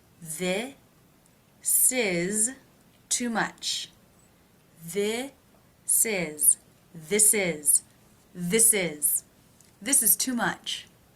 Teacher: we'll take the S sound and put it at the beginning of the word is